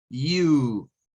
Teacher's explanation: Suena al sonido largo de una U, pero sumado a una especie de J.